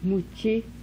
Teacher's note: Voiceless prepalatal affricate.